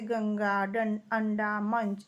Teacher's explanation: अनुस्वार नासिक के व्यंजन है, अर्थात इनको बोलने में नाक का प्रयोग किया जाता है